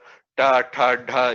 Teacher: You can see that the tongue is striking at the top of your mouth, which is known as murdhanya. That place in the mouth is called murdhanya or murdhani.